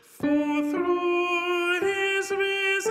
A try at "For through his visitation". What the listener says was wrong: Now here we are going to say visitation because we have a separate syllable there. Listen to the pitches.